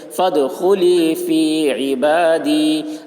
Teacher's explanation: عین کے نیچے زیر ہے، زیر کو جلدی پڑھیں، تھوڑا بھی نہ کھینچیں، معروف پڑھیں، مجہول آواز سے بچیں